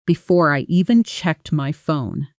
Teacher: before I gets pulled together fast in real speech